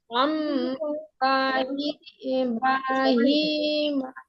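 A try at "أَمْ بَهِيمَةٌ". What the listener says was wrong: মা টান নেই আপু। আম বাহিমা।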